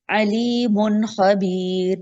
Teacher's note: इसमें नून छुपा हुआ उसको जाहिर कर देना है, सुनने वाले को पता चले। गुन्ना नहीं करना होने देना। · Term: इजहार